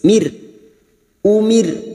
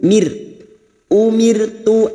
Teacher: ro sukun yang didahului kasrh kita baca tarqik atau tipis Mir Umir dengan posisi bibir kita yang tersenyum Mir umirtu an